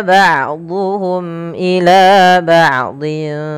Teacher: mim mati bertemu hamzah harus diperjelas suara mimnya karena dia izhar syafawi. Ila bau ila panjangkan dua harakat karena ia mad thbi'i.